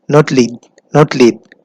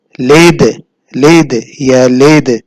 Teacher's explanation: While connecting the dal with the lam, we do the qalqala.